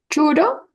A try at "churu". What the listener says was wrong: Churu. No hay la O, recuerden, no hay la O.